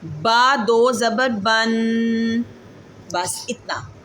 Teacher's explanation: غنے کی مقدار ایک الف کے برابر ہے